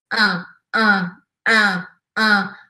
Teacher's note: Dá uma nasalada. Sem pronunciar o i. É quase que eu escuto mais um a do que um i. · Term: sorriso amarelo